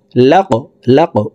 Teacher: কফ হরফ কলকলার হরফ উপরের দিকে ধাবিত করে ধাক্কা দিয়ে উচ্চারণ করব